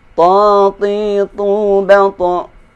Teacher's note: Ta tidak boleh disertai keluarnya nafas. Ta jangan dibaca ta.